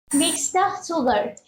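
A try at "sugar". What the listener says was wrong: আচ্ছা, আমি উচ্চারণটা একটু ঠিক করে দিচ্ছি, এটা সুগার না, উচ্চারণটা হবে সুগা। আমার সাথে সাথে বলেন সুগা। মানে শেষে যে আরটা আছে, আর এর উচ্চারণটা কিন্তু হবে না, সুগা। সুগা। সুগা, মিক্স দ্য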